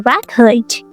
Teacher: When you say record, stress on the first syllable, you mean a thing.